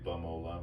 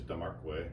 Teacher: You notice I say Bamola with a B, because our P's, Pănawάhpskewi become Pănawάhpskewi. So it's, our P's sound like B's. Our T's sound like D's. So if I were to say, like the name for a beaver, which is Damarkwe, it's actually spelled with a T in our language.